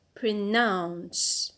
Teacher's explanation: the penult is a schwa and we cannot stress a schwa.